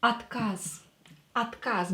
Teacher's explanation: O is not stressed, so we will pronounce it as A. Отказ. Отказ, because it's not stressed.